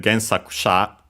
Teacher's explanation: And yeah, as expected, Gensakusha, by the way, notice that the U of ku is barely heard, if at all, Gensakusha, because of the usual rule, because it's between unvoiced consonants. But yeah, accented on the sa, because of that, and because, of course, usually when we add sha, but I'll still check it again, the accent is before sha, the syllable before sha.